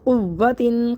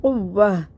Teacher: وقف کی صورت میں کیا کریں گے، قوہ، دو زیر بھی ختم ہو گئے، تا بھی ختم ہو گئے، تو ہا اکیلا باقی رہ گیا، ہا ساکن ہو گیا